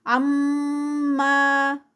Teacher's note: عم پہ غنہ میم مشدد اور ما پہ 2 counts